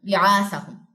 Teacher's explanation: ہا کی پیش کو میم سے ملانا ہے، ہم اور ساتھ میں غنہ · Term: اقلاب